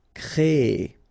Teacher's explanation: So technically you will have this double E sound, créer, okay, so it's longer, créer, all right?